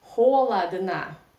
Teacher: unstressed in a weak position without stress we pronounce like Ah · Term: Russian reduction